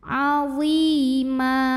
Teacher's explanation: Karena ada ya sukun yang sebelumnya didahului baris kasrah, maka lo-nya ini dipanjangkan cukup 2 harokat saja. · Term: mad tabi'i